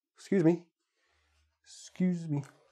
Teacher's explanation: Sometimes we even drop the initial vowel. · I'm not going to go from E to S. I already dropped the K. I may as well just drop the E too.